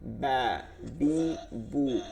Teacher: বা হচ্ছে দুই ঠোঁটের ভিজা জায়গা